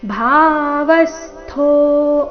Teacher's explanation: ಭಾ ಮಹಾಪ್ರಾಣ ದೀರ್ಘ ಇಲ್ಲಿ ಭಾವ ಬೇಡ ಭಾವ ಭಾ ಸ್ಪಷ್ಟವಾಗಿ ಕೇಳಿಸಬೇಕು ಭಾವಸ್ತೋ ವ ಮೇಲೆ ಆಘಾತ ಭಾವಸ್ತೋ